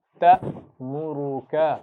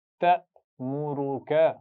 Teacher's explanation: آخر میں کاف زبر کے ساتھ ہے، اس پہ جھٹکا مت دیجیے